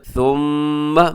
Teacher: थुम्मा मीम मुशद्दद है, यहाँ पे गुन्ना कीजिएगा